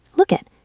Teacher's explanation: Connect the K to the I.